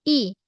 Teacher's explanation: huruf Hamzah ketat bunyi hamzah dan padat daripada pangkal kerongkong